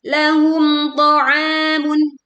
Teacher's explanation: Ketika membaca mim sukun berhadapan dengan to, maka mim sukun dibaca jelas, juga tidak memantul.